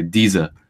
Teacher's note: due to the high German consonant shift that th sound became a D sound